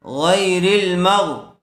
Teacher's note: علی، ہا میم زیر ہم علیہم صراط الذین انعمت علیہم غین یا زبر غی را زیر ری را کو لام سے ملا دیں گے غین یا زبر غی یا ساکن سے پہلے زبر والا حرف آیا ہوا ہے لین کا قاعدہ ہوگا را کو لام سے ملا کر پڑھیں گے چونکہ لام کے اوپر جزم ہے